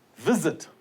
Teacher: the stress is on the first syllable